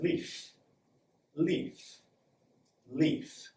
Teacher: if you hear lots of air then you know you're doing a perfect voiceless F sound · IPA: /f/